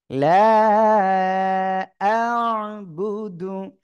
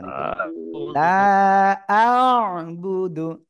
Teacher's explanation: আইনটা গলাটা চেপে একটু বাঁকা মতো হবে